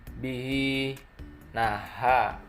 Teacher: Bihi naha, kasroh tersebut hukumnya itu mad silah qasirah karena setelahnya itu huruf waw. Cara membacanya panjang 2 harokat.